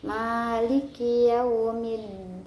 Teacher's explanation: Kemudian ada alif lam syamsiah karena ada alif lam yang bertemu dengan huruf syamsiah yaitu dal, maka hukum bacaannya alif lam syamsiah dan dibaca tidak jelas. Maliki yaumiddin.